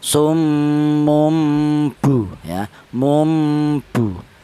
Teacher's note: apabila ada tanwin atau nun mati apabila bertemu dengan huruf ba maka tanwin atau nun matinya itu diganti dengan huruf mim. Itu diganti dengan cara bacanya bukan cara penulisannya ya. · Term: iklab